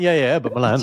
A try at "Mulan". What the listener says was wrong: You're saying Milan as if it's like, I went to Milan the other day in Italy.